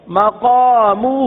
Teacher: تو مقامہ ہا کو ایک الف تک کھینچ کے پڑھیں گے